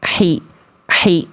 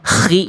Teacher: H kecil itu kan karakter nafasnya lebih lembut daripada K. Dari tengah tenggorokan.